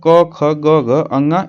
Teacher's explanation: तो इसमें जो कंठ ध्वनियां होती हैं, ठीक ना, तो इसमें क, ख, ग, घ, अंगा ये होती हैं।